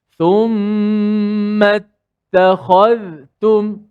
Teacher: Zal tu dijelaskan mati dengan suara za tu dibunyikan. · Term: izhar